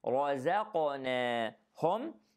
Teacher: and then الراء is heavy, raza, the zay is light, qaf has qalqala and it is heavy, and the noon is light after that.